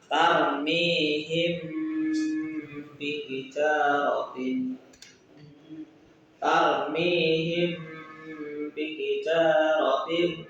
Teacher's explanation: mim sukun bertemu huruf ba untuk dibaca samar dan berdengung. Dengungnya 1,2 alif atau tiga harakat. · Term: ikhfa syafawi